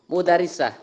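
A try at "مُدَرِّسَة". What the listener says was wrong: Mudarrisah. Harus dengan tasdid. Karena mudarrisah dan madrasah tulisannya sama, hanya pembacaannya yang berbeda.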